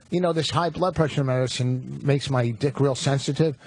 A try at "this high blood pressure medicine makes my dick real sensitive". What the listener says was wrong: Why did you underpronounce medicine and overpronounce sensitive?